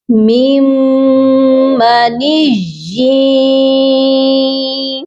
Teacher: اب ہم یا کو یا مشدد کے ساتھ ملائیں گے بھی اور غنہ بھی کریں گے